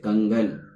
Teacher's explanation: अनुस्वार का उच्चारण करते समय हवा केवल नाक से निकलती है। अगर किसी वर्ण का उच्चारण कर रहे हों और उस समय अगर हवा नाक से केवल निकल रही हो तो वहां हम लोग अनुस्वार का प्रयोग करते हैं।